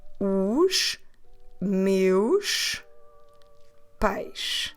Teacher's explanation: Notice how every word ends at the sound sh. Here there's no way to run these words together because they don't end at vowels, they don't start with vowels.